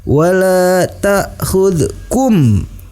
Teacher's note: hukum bacaannya adalah ikhfa syafawi, dibaca dengan disertai dengung ke hidung.